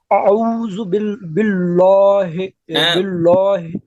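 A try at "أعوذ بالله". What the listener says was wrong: نہیں موٹا نہیں کریں گے، باریک نارمل پڑھیے. نہیں موٹا نہیں کرنا پڑے گا. اللہ کا لام ہے تو موٹا تھوڑا کریں گے. اس سے پہلے زبر ہے زیر ہے؟ زیر ہے تو باریک ہے نا.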